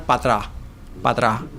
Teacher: la truncación de la preposición y la elisión de la S final